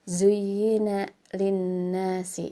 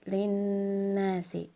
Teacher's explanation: Zuyyina linnasi, ada nun bertasydid ya, harus ditahan dulu pembacaannya, jadi bukan linnasi tapi linnasi, bedakan ya.